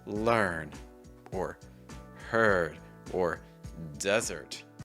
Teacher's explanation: British English will remove the R sound, especially when the R comes before a consonant